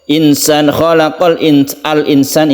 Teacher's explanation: Kemudian nun bertemu dengan sin adalah ikhfa hakiki, kita panjangkan, kita samarkan ini.